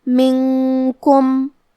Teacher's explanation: یہاں نون ساکن ہے، پھر حرف الکاف ہے، یہاں حکم ہے اخفاء تو ہم یہ حکم کو غنہ کے ساتھ ادا کریں گے